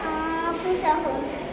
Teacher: நூன் சாக்கின் அல்லது தன்வீனுக்கு அப்புறம் இக்ஃபாவுடைய 15 எழுத்துக்கள் ஏதாவது ஒன்று வந்தால் நூன் சாக்கினையும் தன்வீனையும் குன்னா செஞ்சு மறைச்சி ஓதணும்